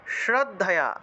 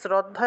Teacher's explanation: দন্তস উচ্চারণ হলো স্রদ্ধা অনেকে শ্রদ্ধা বলে ফেলেন